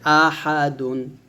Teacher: এই হাটা গলার মাঝখানে থেকে চাপতে বলতে হবে